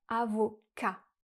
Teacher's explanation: Et ensuite, elle a dit « avocate » au lieu de « avocat ». Dans le mot « avocat », le T est muet et le S du pluriel aussi. Donc on va dire simplement « avocat ».